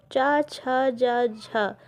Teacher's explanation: इनके उच्चारण में भी संघर्ष की स्थिति बनती है इसे स्पर्श संघर्षी व्यंजन कहते हैं